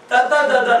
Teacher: ತ, ತ, ದ, ದ, ನ ಅಂತ ಹೇಳಿ ನಾಲಿಗೆ ಹಲ್ಲಿಗೆ ತಾಕಬೇಕು